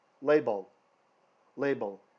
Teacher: roof the roof of the mouth the pallet LL LL label the last L the tongue is flat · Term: soft l, soft el